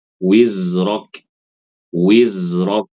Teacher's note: ketika membaca wizrak huruf kaf sukun itu ada sifat hames